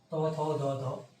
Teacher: এদের উচ্চারণ দন্ত, কারণ এদের দাঁতে উচ্চারিত হয়